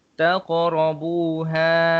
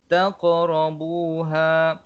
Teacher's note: Qaf mati, jadi kita kena lantunkan huruf qaf tersebut. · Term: huruf qalqalah